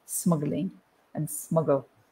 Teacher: you've got the g and the l so you've got a consonant cluster so we have to say smuggling we actually put an uh in the middle to make it easier